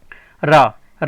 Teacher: रा को लुंठित या प्रकंपित व्यंजन भी कहा जाता है, क्योंकि इनके उच्चारण में जीभ में कंपन होता है